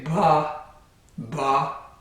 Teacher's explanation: Well, if you say the sound for ba, the B sound, ba, the vocal cords will vibrate before the air is released. You can feel this if you put your fingers on your throat where the vocal cords are and say ba, ba. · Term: voicing